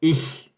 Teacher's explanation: Você apoia a ponta da sua língua abaixo dos seus dentes, ou seja, atrás dos dentes de trás, e você assopra com a garganta. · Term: CH do alemão